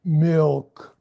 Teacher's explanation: it's almost a silent L a little bit. Just a little bit of emphasis added to the ill sound. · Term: dark L